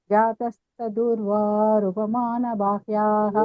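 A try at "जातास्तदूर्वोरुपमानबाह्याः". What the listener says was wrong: జాత అంట జాతా దీర్ఘం ఉంది జాతాస్త దూర్వో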